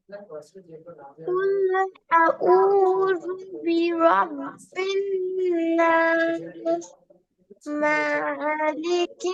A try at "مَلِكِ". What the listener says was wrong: মাথা টান হয়ে গেল মাথা টান দিয়ে যাবে না দ্রুত মালিকিন মালিকিন হ্যাঁ তারপরে মাশাআল্লাহ সুন্দর হয়েছে শুধু মাথা একটু টান হয়ে গেছে আরো দ্রুত বলতে হবে আচ্ছা রাহিক আফজাল বলেন